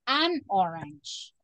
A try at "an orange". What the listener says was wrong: The correct pronunciation is an orange. We don't separate it. We say an orange. Exacto. Sí, ese es el truco.